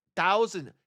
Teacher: anything with a th I make a t sound